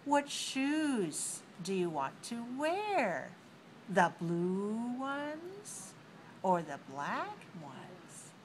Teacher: when I asked the question my intonation goes up on the first and down on the second · use Rising on the first one and falling on the second one